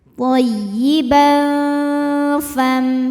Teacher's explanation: Kemudian ada hukum ikhfa awsat, karena ada tanwin fathah menghadapi huruf fa, maka tanwin dibunyikan samar-samar siap-siap menuju makhraj huruf fa ya, disertai dengung